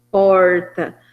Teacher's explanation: E o R caipira, que é chamado de R retroflexo, que seria esse porta, porque a gente não tinha, nas línguas indígenas, essa estrutura silábica de consoante, vogal, consoante, né, de por.